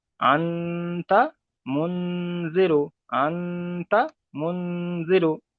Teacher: নুন সাকিনের পরে এখানে বলবেন যে নুনের উপর সাকিন এসছে, তাহলে নুন সাকিন, নুন সাকিনের পরে হুরুফে ইখফার 15টি অক্ষরের মধ্যে এখানে তা এসেছে, তাই নুন সাকিনের আওয়াজকে নাকে তুলে একালি পরিমাণ গুণনা করে পড়তে হবে